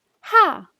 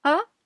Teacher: kind of the same sound, except it's aspirated.